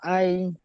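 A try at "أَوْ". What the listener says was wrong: হামজা ওয়া জবর আই কি করে হয়? হামজা ওয়া জবর আই কি করে হয়? আমরা প্রথমবারে কি পড়লাম? হামজা ও জবর আও, আও।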